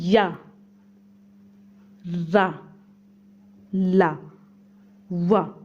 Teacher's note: इनका उच्चारण जो होता है स्वर और व्यंजन के मध्य का होता है। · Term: अंतस्था